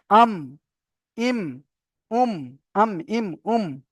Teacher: দুই ঠোঁটের শুকনো অংশ মিলিত হয়ে উচ্চারিত হয় মিম